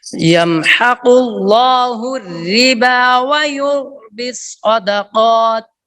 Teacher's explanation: रिबा की रा बारीक है व युर्बी सदाकात की रा पुर है